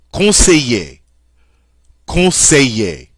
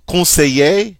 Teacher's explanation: Notice the double L in this case sounds like a Y.